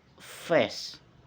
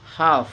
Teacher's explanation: Oke, the explanation is eh isess, labodental and frictif and air pass between the bottom lip and upper teeth without vibration